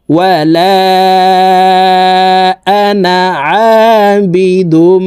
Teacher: তো এখানে 4টির ভিতরে একটিও নাই, তো আমরা এই নুনকে টান ছাড়া পড়তে হবে, দ্রুতভাবে পড়তে হবে